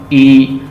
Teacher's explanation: This made by extending your lips to either side of your face as a smile, as in a smile, जैसे आप हंसते हैं, मुस्कुरा।